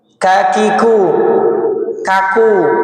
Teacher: Kalau kaf ini pangkal luar. Ka, ki, ku. Lebih ringan.